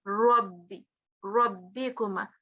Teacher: make that Ra sound a bit more round in your mouth. Because if it carries a fatha, it will be more rounded.